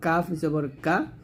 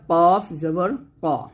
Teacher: কাফ না এটা হচ্ছে কফ কফ জবর ক মোটা করতে হবে কাফ পাতলা হবে কফ মোটা হবে